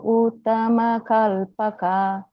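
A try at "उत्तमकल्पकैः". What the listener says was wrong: But only one correction is here. This is not uttama kalpaka. It's uttama kalpakai. Kai. So kai வந்து இங்க h வந்துச்சுன்னா உத்தம கல்பகஹி. So I வந்துட்டு சைலண்டா இருக்கணும். உத்தம கல்பகை. அந்த மாதிரி.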